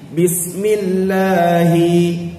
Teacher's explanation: Pada lam lafzul jalalah itu perlu dipanjangkan dua harakat. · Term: hukum mad asli